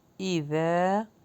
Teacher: ذال کے مخرج کو سافٹ کریں گے، لانگ کریں گے کیونکہ الف مدہ ہے